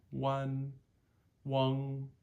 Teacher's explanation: making sure that we stop voicing those NG endings